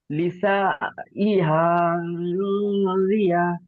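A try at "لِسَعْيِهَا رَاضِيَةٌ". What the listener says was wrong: লিসা, আইন উচ্চারণ করেন, সিন আইন যাবার সা। রাদিয়া, র। জি, লিসাইহা রাদিয়া।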